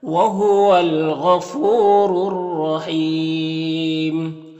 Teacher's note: یہاں پر الف لام حروف شمسی را کے شروع میں ہے تو الف لام دونوں کو نہیں پڑھیں گے۔ رائے مشدد کے اوپر زبر ہے تو را کو پر پڑھیں گے۔ یہاں پر وقف کریں گے تو میم کا پیش سکون سے بدل جائے گا، تو مد عارض وقفی ہوگا، تو اس طرح سے پڑھیں گے۔